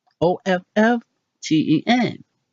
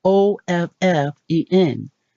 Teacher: Leaving the T out, so it must be silent. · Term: T is definitely silent